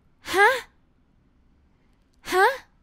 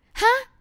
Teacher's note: Short sound, but high tone.